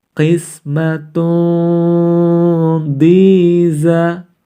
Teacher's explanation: tanwin domatain harus dibaca samar-samar sebanyak 2 sampai dengan 3 harokat